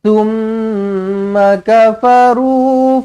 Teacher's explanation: Summa, mim sabdu wajibul gunnah dengungkan 2 harakat.